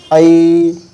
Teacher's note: একটি উচ্চারণ হয় এবং শেষের দিকে আরেকটি উচ্চারণ হয় যেরকম এই আ উচ্চারণ হচ্ছে এবং শেষের দিকে ই উচ্চারণ হচ্ছে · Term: সন্ধি অক্ষর